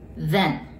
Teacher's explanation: th▁があるので舌を噛み、最後は▁n▁で舌を上につけます。